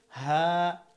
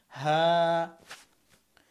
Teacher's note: হা হচ্ছে হলকের শেষ, কিন্তু এর উচ্চারণটা কেমন যেন ভিতর থেকে আসবে। হা, হাকে অনেক শক্ত করা যাবে না।